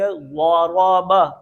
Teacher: یہ ضاد جو ہے یہ موٹا پڑھیں گے. را بھی موٹا پڑھیں گے.